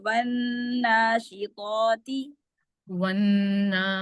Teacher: کھڑی زبر جو ہے نا وہ 2 حرکات کے برابر ہے